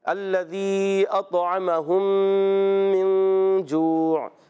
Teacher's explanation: اور اگر میم ساکن بعد دوسری میم آئے اطعمہم من جوع جیسے ہے قرآن پاک میں، تو اب وہاں دیکھیں سورہ قریش میں ہے نا الذی اطعمہم من جوع. میم ساکن بعد دوسری میم آئی، اس کو کہتے ہیں ادغام شفوی، اس میں ہی غنہ